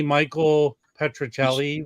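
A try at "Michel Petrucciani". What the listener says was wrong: Michelle Petrucciani. Michelle. It's not Michael. It's Michelle.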